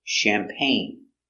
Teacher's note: Accent goes up at the end.